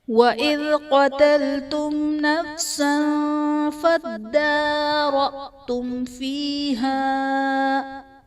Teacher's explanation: قتلتم نفسا میں میم ساکن کے بعد حرف با اور میم کے علاوہ نون ہے تو یہاں پر اظہار شفوی کا قاعدہ ہوگا، یعنی میم ساکن میں ہم غنہ نہیں کریں گے